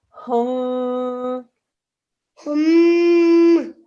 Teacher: There's a meme shaddad. There's 2-second nasal sound.